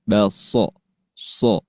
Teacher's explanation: Kemudian ada sifat yang dimiliki huruf shad, salah satunya yaitu sifat sofir atau keluar bunyi desisan. Baso, so. Dan dibaca tebal ya untuk huruf so.